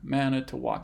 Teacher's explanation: it's four syllables and has stress on the first and the last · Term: funny stress pattern